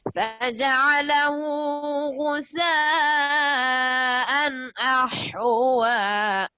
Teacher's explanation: غنہ تو نہیں کرنا، لیکن نون کو اطمینان سے پڑھیں